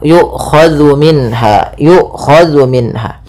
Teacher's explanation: jangan sampai dibaca dengan zai gitu ya, tapi dia zal